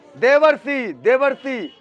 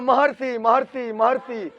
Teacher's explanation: देवर्षि का जब तुम उच्चारण करोगे तो तुम्हारे मुंह में अपने आप स्वतः ही अर का उच्चारण होगा। बोल के देख लो, देवर्षि, देवर्षि, हर उच्चारण में अर की मात्रा का उच्चारण नजर आएगा, समझे?